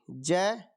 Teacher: ज का उच्चारण स्थान होता है तालू से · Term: तालव्य